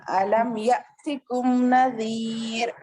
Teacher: हमजा साकिना के पढ़ने में झटका होता है